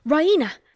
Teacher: She pronounces it Raina with the stress on the E.